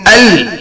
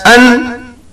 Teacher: in Al, the tongue touches the upper part of the gums, whereas An is slightly from the lower part of gums.